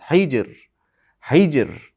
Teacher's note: Qosamul li ikki harakat miqdor cho'ziladi. Hij hijda qalqala qilamiz. Ra ingichka aytamiz.